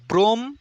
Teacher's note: ম টা কিন্তু উচ্চারিত হচ্ছে না